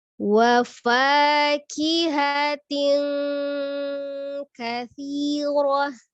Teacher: Ketika bertemu dengan huruf kaf, maka ikhfa-nya menjadi tebal. Jadi menyerupai seperti mendekati bunyi ang ya.